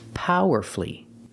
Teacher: The U is silent. So we say powerfully because the stress is on the first syllable and you have two syllables before F-U-L-L-Y.